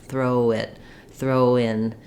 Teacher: our natural diff Fong for o and then we we as we move to the next vowel we end up with the gliding W sound